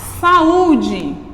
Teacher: duas vogais juntas mas quando pronunciadas elas são pronunciadas em sílabas diferentes quando eu falo saúde e eu tenho ua e o juntos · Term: hiato